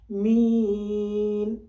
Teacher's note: ایک دم اپنی زبان کو اوپر کھڑا کر دیجئے نون کے مخرج کے لیے، وہاں پہ نون ادا ہو جائے گا بغیر زیر زبر کے